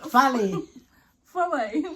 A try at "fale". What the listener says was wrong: This doesn't have a lay after the fale.